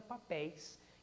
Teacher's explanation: Notem novamente o i da palavra papéis fraco, a semivogal i, mas colocada depois da vogal e. Então nós temos um ditongo decrescente no papéis igual ao ditongo decrescente do fogaréu.